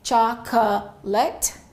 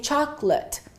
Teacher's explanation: We reduce it to two syllables and we say chocolate. The late becomes l and the o completely disappears. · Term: disappearing syllables